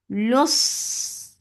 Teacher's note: Sad will get sifa of rakhawa and it is heavy and it will get safir. Safir means the whistle sound.